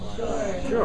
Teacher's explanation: the pitch may be falling as in sure